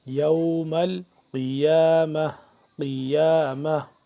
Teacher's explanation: گول تا کو ہم آخر میں ہا کے ساتھ کنورٹ کر دیں گے آخر میں اگر وقف کریں گے تو